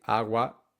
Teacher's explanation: both syllables are nearly identical in length so when we say AWA the stress does fall on the first syllable but that doesn't mean that we say aa aa it is